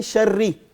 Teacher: اب شرری میں را جو ہے اس کے اوپر شد بھی ہے اور اس کے نیچے زیر بھی ہے. جب را کسرے کے ساتھ آ رہی ہے, زیر کے ساتھ آ رہی ہے, اس کو باریک آواز میں پڑھیں گے